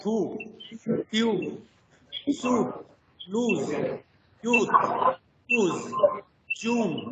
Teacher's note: It is a back, and as far as the three term label diagram is concerned, it is a back rounded vowel